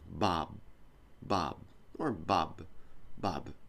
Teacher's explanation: just before you open your lips buh buh buh like that when you finish the sound it's the same thing as the P you can do a small opening or you can just do close your mouth